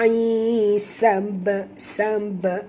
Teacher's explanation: ba ini mati di tengah-tengah kalimah, maka kita kena lantunkan bunyi ba qalqalah sughra